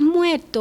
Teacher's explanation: muerto. Pero no llega a ser, está ahí en el medio, la vibrante comienza a perderse en la geminación